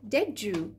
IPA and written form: dɪʤuː (did you)